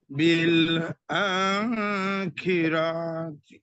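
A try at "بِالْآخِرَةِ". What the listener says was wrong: বিল আ টান হবে কিন্তু র টান হবে না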